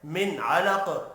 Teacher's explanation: نون ساکن کے بعد عین ہے، اظہار حلقی ہوگا، غنہ نہیں ہوگا